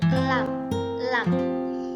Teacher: memiliki sifat jahar dan baini, nafasnya tidak keluar dan suaranya sedang.